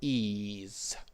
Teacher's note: We need a voiced z